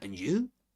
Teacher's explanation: we stress the last you because we're making a contrastive focus between u me and you.